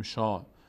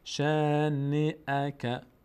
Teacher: ش الف صدای آ میگیره اما پر نمیشه. نمیگیم شا.